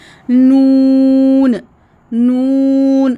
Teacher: नून पढ़ते हुए डे kids आपने ज़ुबान की नोक ऊपर मसूड़ों के साथ लगानी है और आवाज़ नाक से भी निकलती है। इसको गुन्ना कहते हैं।